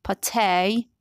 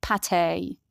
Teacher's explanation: Words borrowed from French are stressed differently, especially if the last letter is a vowel. So in American English, the second syllable is stressed, but in British English, the first syllable is stressed.